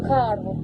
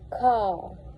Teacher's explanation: higher social class individuals will fully pronounce the R sounding like car, while lower social class individuals were more likely to omit the R, making it sound like car. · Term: rhotic